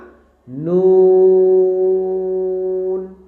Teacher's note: তো এই নুন বলার সময় কিন্তু আমাদের ঠোটটা একটু গোল হবে।